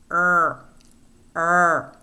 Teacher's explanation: Next, we have the central approximant, which is voiced and is post-alveolar, and it is the sound r. It's a central approximant because the airflow is being expelled out the center of the tongue.